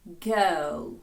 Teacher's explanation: це наш звук «е», коли ми розслабленими губами трошки посміхаємося. «Е», як в слові «girl».